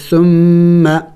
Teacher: ثم میم مشدد ہے غنہ کریں گے